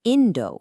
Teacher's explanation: And Indo, for India, starts high and then falls. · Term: pitch accent